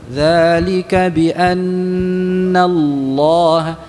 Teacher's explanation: Ingat yang kita ucapkan lam di dalam lafzul jalalah itu lam ya, bukan seperti ya, bukan seperti waw. Lam ya, lam yang dibaca dengan tebal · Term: Huruf lam yang dibaca tebal